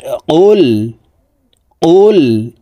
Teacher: কফ হরফের উচ্চারণ জিহ্বার গোড়া তার বরাবর উপরের তালুর সঙ্গে লাগাইয়া উচ্চারণ করে পড়তে হবে